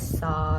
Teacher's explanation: और ऊष्म वर्ण इसका आखिरी जो है वो है सा, सपेरा वाला सा, और ये दंत से बोला जाता है